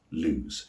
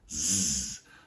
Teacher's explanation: Notice that the S is voiced. That means it sounds more like a Z sound. Your vocal cords are vibrating when the S is produced. Z, not S, but Z.